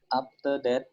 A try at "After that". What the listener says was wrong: No, it's not after. It's not after. After that. After that. No. Don't close your mouth. It's an F sound. After that.